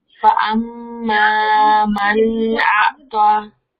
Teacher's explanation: یہ نون ساکن اس میں اظہار کرنا تھا. نون ساکن کے بعد حمزہ ہے نا